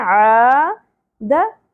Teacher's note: عین زبر کے ساتھ الف حرف مدہ ایک الف کے برابر کھینچنا ہے